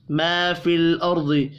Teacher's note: لام اور را ساکن ہے، دونوں پر قلقلہ نہیں ہوگا، را ساکن سے پچھلے حرف کے اوپر زبر ہے، را کو پر پڑھیں گے، ضاد حروف مستعلیہ ہے، ضاد بھی پر پڑھا جائے گا۔